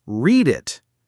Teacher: if you're listening for the word it, you might miss it completely because it's just a little tag at the end of read. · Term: linked